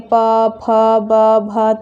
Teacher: तो दोनों upper lips मतलब वो दोनों जो हमारे होठ हैं वो आपस में क्या होते हैं? स्पर्श करते हैं। तो ये जो वर्ण है इनका उच्चारण हमारे होठ से होता है, इसलिए इसको कहते हैं ओष्ठ वर्ण।